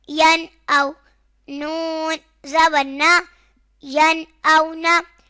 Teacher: نون ساکن کے بعد حروف حلقی میں سے حمزہ آ رہا ہے تو اظہار ہوگا، یعنی گنہ نہیں کریں گے